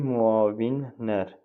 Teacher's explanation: Burda müavinlər sözündə də L var amma N kimi oldu.